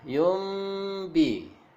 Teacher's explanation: nun mati langsung berubah menjadi mim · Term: iklab